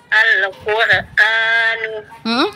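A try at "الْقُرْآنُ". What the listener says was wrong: Ulang, hati-hati jangan ada pantulan di huruf lam. Al-Qur'anu.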